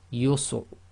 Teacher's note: sometimes the Ra is almost not audible